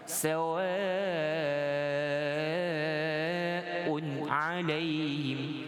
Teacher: Jadi dibaca panjang pada waw fathah. Bacaan ini kita lebih kepada harokat tawilah, bacaan panjang.